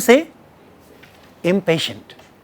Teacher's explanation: If the negative is coming before that, it must be a labial nasal